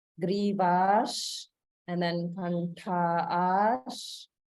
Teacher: There's holding on Visarga 2 times in a row.